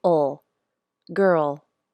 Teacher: the back of my tongue drops and my tongue tip comes up for the ole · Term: dark L